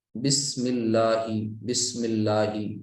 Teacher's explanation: بسم اللہ الرحمن الرحیم، بسم اللہ، بسم اللہ، اس کو لام کو موٹا نہیں رکھنا ہے، بسم اللہ، بسم اللہ، لام پتلا ہوگا کیونکہ زیر کے ساتھ مل رہا ہے